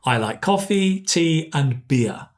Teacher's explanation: it goes up and up and on the last one it comes down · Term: intonation patterns